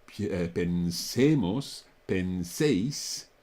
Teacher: And that is, of course, because the stress is not on those forms. The stress is on the middle syllable